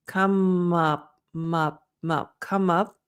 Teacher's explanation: the P it's clear but it's not super aspirated